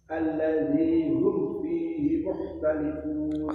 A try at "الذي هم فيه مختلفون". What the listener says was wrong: khoknya kurang